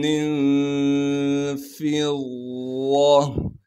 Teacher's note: تا کو میم سے ملائیں گے غنہ کے ساتھ، ادغام کے قاعدے سے اس دو زر کی تنوین کو ختم کر کے تا کو میم سے ملائیں گے غنہ کے ساتھ۔ پھر میم کو آگے نون ساکن سے ملانا ہے، اس لیے کہ نون ساکن ہے، اور نون ساکن پر اخفا یعنی غنہ کریں گے۔ فا کو ضاد سے ملائیں گے، اس لیے کہ ضاد پر تشدید ہے، تشدید ہونے کی وجہ سے تھوڑا سا ٹھہراؤ رکھیں گے اور ضاد کو موٹا کر کے پڑھیں گے۔